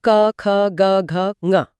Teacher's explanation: हां आवाज सीधे गले से आती है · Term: क वर्ग